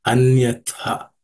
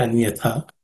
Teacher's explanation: In terms of pronunciation, the last letter tha in the first word, it has to be aspirated